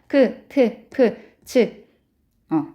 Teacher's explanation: 거센 소리는 성대 근육이 긴장되기도 하고 숨이 거세게 나오기도 하는 소리예요.